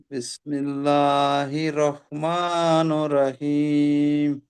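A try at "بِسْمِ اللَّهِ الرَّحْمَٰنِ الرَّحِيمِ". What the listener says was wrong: বিসমিল্লাহ ঠিক হলো না। বিসমিল্লাহ, এই হা নিচে যে জের আছে, জেরটা তো র সঙ্গে মেলাতে হবে। হা র জের হির। বিসমিল্লাহির নির রহিম, এই নুনের নিচে যেটাই র সঙ্গে যুক্ত হবে। নির রহিম।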